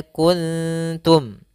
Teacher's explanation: suara nunnya disamarkan kepada huruf Ta Maka di sini diwarnai dengan warna hijau cara membacanya yaitu ditahan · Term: Ikhfa